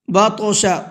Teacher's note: بطش طا کے اندر قلقلہ کریں گے